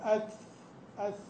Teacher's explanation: حرف الثاء هذا مهموس صح ورخو لا ولا شديد لا حابس الصوت فيها قول اث اث يمشي